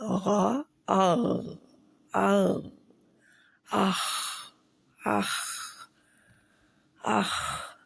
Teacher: تو خا اور غین کا مخرج ایک ہی ہے اور دونوں ہی موٹے حرف ہیں، خا بھی اور غین بھی۔ · مخرج اس کا لکھ لیں، کہاں سے نکلتا ہے؟ حلق کے آخری حصے سے، اس کو کہتے ہیں ادنی حلق